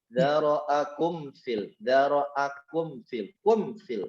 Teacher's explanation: Oh, idhar syafawi. Ya, karena mimnya dibaca jelas tanpa ada guna